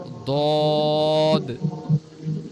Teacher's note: জিহ্বার গোড়া অর্থাৎ জিব্বার যে শুরুর দিকের যে অংশটা, ওই অংশের দুই পাশটা মাড়ির দাঁতের গোড়ার সঙ্গে লাগবে, হ্যাঁ। দুই পাশের দুই মাড়িতে দাঁতের যে পাশের যে অংশ আছে এটা লাগবে, লেগে দদ। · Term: ৭ নম্বর মাখরাজ